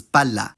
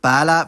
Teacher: If there's a geminated consonant, the vowel before it will be short, but if the consonant is ungeminated, the vowel will be long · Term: vowel length distinction